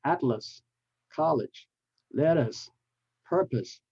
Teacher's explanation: They're all different vowels, but they all have the same schwa sound, which is like let them up, because they are unstressed.